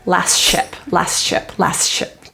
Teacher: So what happens here is the T is dropped. So then last links to sh and ship.